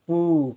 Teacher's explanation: पा के साथ ऊ का उच्चारण देर तक तो पू तो बड़े ऊ की मात्रा ऋण पूर्ण।